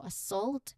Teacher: So pronunciation wise when you say this word the first sound is a very soft almost hidden a sound like the beginning of about or away. So assault the main part of the word which is also the stressed and louder is the second syllable salt